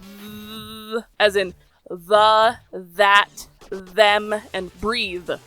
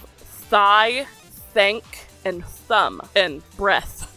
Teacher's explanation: DH shows up in the. It's less airy than the TH noise, and it's similar in many ways to the V noise.